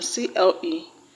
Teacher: The word cleric has its stress on cle.